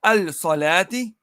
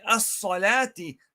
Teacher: To denote that this lam is lam al-shamsiyah. So you merge the lam, the lam into the sad.